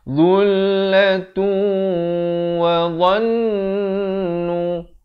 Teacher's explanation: Masuk beserta dengung dengan kadar dua harakat. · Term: idgham bi gunnah